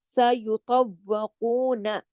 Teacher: قاف کے ساتھ مد بھی ہے، کو، اس کو پورا 2 حرکات کھینچ کے پھر نون کے ساتھ ایک حرکت ہے